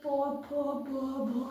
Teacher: ये सब होठ से बोले जाते हैं। प फ ब भ, कहीं भी जीभ नहीं सकता है, तो ये पावर जो है वो होठ से बोला जाता है।